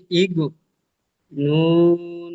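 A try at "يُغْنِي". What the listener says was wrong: আচ্ছা, আপনি যখন বলছেন এখানে আমরা বুঝতে পারছি যেন ইগনি বলছেন, আপনি একটু পরিষ্কার বলবেন ইউগনি। ইউগনি, ইউ প্রথমে উচ্চারণ করেন।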